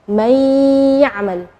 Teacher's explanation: Nunnya tidak jelas tapi ada suara dengung gunnahnya. May, jadi itu namanya idgham. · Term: idgham bi gunnah